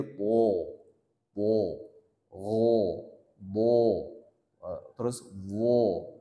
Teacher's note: Pangkal lidahnya naik ke atas langit-langit, maka dia ditebalkan hurufnya. Ditebalkan hurufnya menjadi po, po, ro, bo, terus wo.